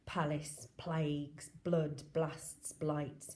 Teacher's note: So we've got lots of plosive alliteration to emphasise his feelings.